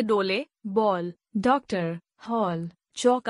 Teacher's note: आगत ध्वनि का उच्चारण अ और ओ के बीच की ध्वनि के रूप में होता है। इसका चिह्न ओ है।